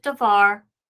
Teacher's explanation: originally the accented syllable was the VAR the second syllable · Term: tone syllable